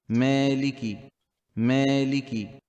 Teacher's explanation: it's like you're adding a slight sound of ya when you stretch when you pronounce the stretching alif